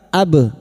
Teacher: ba sukun sama huruf qalqalah yang mati asli di tengah kalimat jangan lupa dipantulkan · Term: qalqala sugro